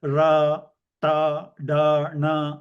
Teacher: the letters pronouncing which your tongue has to roll back backwards the tip of the tongue will roll back and touch the roof of the mouth front roof of the mouth this is the letters like ra T da na all those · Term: retroflex